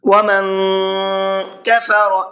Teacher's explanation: نون کی آواز کے اندر اخفا کر کے پڑھیں گے، تھوڑا سا ناک میں آواز کو چھپا کر کے پڑھیں گے